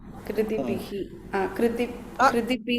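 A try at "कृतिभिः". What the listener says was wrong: பிஹி சொல்லாதீங்க இது கடைசியில வந்தாதான் கிருத்திபி அப்படின்னு வரணும் இந்த இடத்துல கிருத்திபி லேசா ஒரு ஹா ஒரு ஒரு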